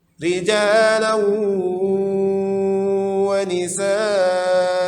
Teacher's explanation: tanwin berjumpa dengan waw, idgham bi gunnah, berdengung.